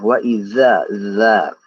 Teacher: Nah, orang-orang biasanya membaca huruf za itu makhrajnya itu digigit. Tapi sebenarnya untuk huruf za itu berada di belakang gigi seri atas ya. Ujung lidah ini berada di belakang gigi seri yang atas. Gigi seri di belakangnya.